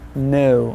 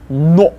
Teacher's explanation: unlike English it's not an O but oh the way it comes out that's the way it stays